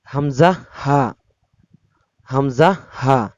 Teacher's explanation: হলকের শুরু হইতে হামজা হা